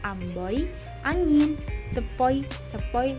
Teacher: difton naik menutup maju oi misalnya pada kata Amboi angin sepoi sepoi